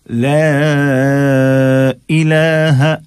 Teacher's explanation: لا مد ہم کھینچ رہے ہیں اور حمزہ کو ظاہر کر رہے ہیں